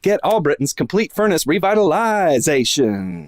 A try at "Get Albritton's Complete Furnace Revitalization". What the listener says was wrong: Not bad. Maybe a little more on the zation.